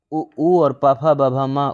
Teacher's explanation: उ और प, फ, ब, भ, म ओष्ठ से। व दंतोष्ठ है।